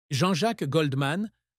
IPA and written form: ʒɑ̃ ʒak ɡɔldˈman (Jean-Jacques Goldman)